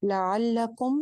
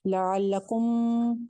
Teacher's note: तो मुंह को थोड़ा सा ज्यादा खोलेंगे तो उनका आइन ज्यादा अच्छा निकल आएगा। लअल्लकुम, कुम की मीम के ऊपर कोई गुन्ना नहीं करना, कुछ नहीं करना, ना आवाज को लंबा करना है। लअल्लकुम, आवाज को चलाना नहीं है।